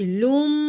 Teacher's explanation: لام میم 2 پیش لم. منہ بند کریں گے, غنہ نکالیں گے ناک میں سے.